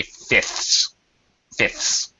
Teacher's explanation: when you say fifths it is perfectly okay to not pronounce the middle uh F here all right you don't have to to pronounce it so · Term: reduced form